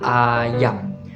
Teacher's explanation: lidah ke bagian bawah atau rendah tapi dia berada di bagian tengah jadi tidak terlalu depan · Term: vokal A